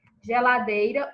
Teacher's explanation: o dei, é a sílaba tônica, também é uma palavra paroxítona